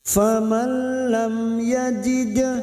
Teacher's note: mim sukun bertemu ya idhar safawi mim sukun dibaca jelas. Lam yajid dal sukun qalqalah sugroh yang mati asli di tengah kalimat kita pantulkan.